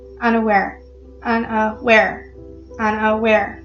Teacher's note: anapest which is unstressed unstressed and then a stressed